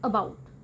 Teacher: श्वा sound English की सब तो कॉमन वाउल साउंड है जिहड़ा अनस्ट्रेस्ड सिलेबस ਦੇ ਵਿੱਚ ਹੁੰਦੀ ਹੈ।